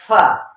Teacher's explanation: जब ऊपर के दोनों दांतों का सिरा जब निचले होंठ के गीले हिस्से को लगे